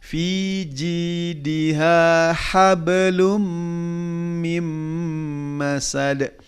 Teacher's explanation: ha kedua di tengah tenggorokan